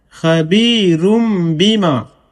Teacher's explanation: خا زبر خا، با یا زیر بی، خبی را دو پیش رن، خبیرن، با زیر بی، میم الف زبر ما، بیما، خبیرم بیما. یہاں پر بھی تنوین کو یعنی دو پیش کو اقلاب کر کے پڑھیں گے یعنی میم سے بدل کر کے پڑھیں گے، کیونکہ تنوین کے فوراً بعد یہاں پہ با آ گیا ہے